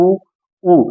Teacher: जैसे ओठ गोलाकार में आता है ऊ, जब मैंने छोटा ऊ का, जैसे छोटा ऊ या बड़ा ऊ का उच्चारण किया, जैसे ऊ ऊ, तो मेरे जैसे आपने देखा होगा कि ओठ कैसी आकृति ले रहे हैं, गोलाकार आकृति ले रहे हैं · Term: वृत्तमुखी